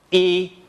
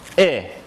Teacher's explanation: These two vowels are pretty much the same with regard to where the body of the tongue is, but one is tense and the other lax. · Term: tense and lax vowels